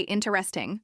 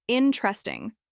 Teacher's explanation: Many learners say interesting, stressing the second or third syllable. But in many English accents, the stress is on the first syllable, interesting.